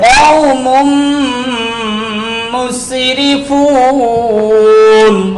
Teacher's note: চার হরফের এক হরফ মিম আসিয়াছে ইদগাম বাগুনা সরফে একরো বিনাশিয়াছে অতএব তানবিনকে ইদগাম করিয়া গুন্নার সহিত পড়িতে হয়